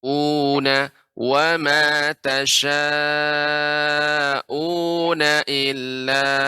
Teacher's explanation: U-nya dibaca 2 harakat Ibu dengan cara ditekan.